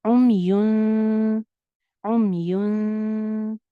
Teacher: यहाँ पे हम इख्फा करेंगे, नून को हाइड कर देंगे